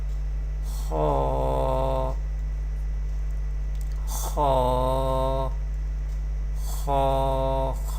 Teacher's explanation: Kha is Mustaliya letter and will be pronounced with thicker voice.